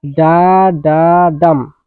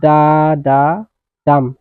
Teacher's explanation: শেষৰটো stressed syllable, ইয়াত জোৰ দিয়া হৈছে। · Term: এনাপেষ্টিক মিটাৰ